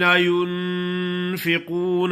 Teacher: نون پہ غنا کرنا ہے، آگے قاف موٹا ہے اور واو مدہ بھی ہے